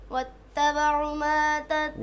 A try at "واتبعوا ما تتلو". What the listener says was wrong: वत्तबअू, वाव को थोड़ा खींचें।